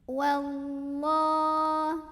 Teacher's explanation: ada lam pada lafaz Allah atau lam jalalah yang dibunyikannya secara tafkhim